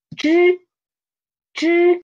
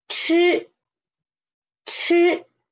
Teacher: The only difference is the air. For 知, we use soft air. But for 吃, we use stronger air. To test it, try to put your hand in front of your mouth or a tissue or a paper, okay?